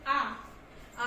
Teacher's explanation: वे स्वर जिनके उच्चारण में मुख पूरा खुला होता है उसे विभक्त स्वर कहते हैं। जैसे आ बोलेंगे, आप बोल के देखिए, आ बोलने में आपका पूरा मुंह खुल रहा है, उसे हम क्या कहेंगे, विभक्त स्वर।